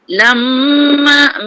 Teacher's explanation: lamma mim sabdu wajib gunnah